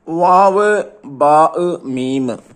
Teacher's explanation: ഈ രണ്ട് ചുണ്ടിൽ നിന്ന് പുറപ്പെടുന്ന അക്ഷരങ്ങൾ മൂന്നെണ്ണമാണ് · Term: ഷഫത്താനി